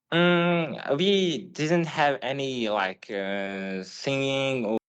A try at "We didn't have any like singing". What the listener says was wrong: Again, intonation, it's okay, but pronunciation does feel a little bit staccato. A little bit.